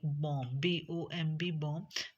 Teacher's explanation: And but when b combine with other consonant, like when consonant m will come before b, so its sound becomes changed, like bomb, bomb, bomb. So b will be silent and we will produce m